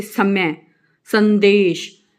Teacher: जब आप स का उच्चारण करते हैं तो जीभ का आगे का भाग दंत को, यानी कि दांतों को स्पर्श करता है